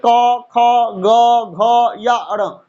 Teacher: इन सभी वर्णों का उच्चारण स्थान है आपका कंठ